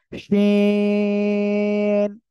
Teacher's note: শা শা শব্দ করে, জিহ্বার মাঝখান তার বরাবর উপরে তালুর সঙ্গে লাগিয়ে শা শা করে উচ্চারণ হবে